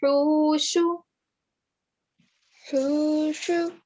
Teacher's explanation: do you know where the sound of the ha comes from? From the middle of the throat.